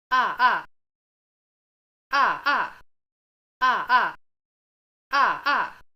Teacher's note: combinations and finally the 4 4 combination is voiced like this in this case you could probably just think of them as one fourth tone after another